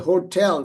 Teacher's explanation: So even the hotel for example there is a slight aspiration in hotel.